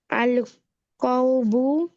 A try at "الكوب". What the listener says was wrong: Right, কাউবো কেন? কাফের উপরে কি হরকতটা? আল কুবু, পেশ হবে।